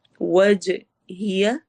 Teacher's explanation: جیم پر قلقلہ کی ساؤنڈ ہوگی، آواز ہلے گی، ایکو ساؤنڈ ہوگی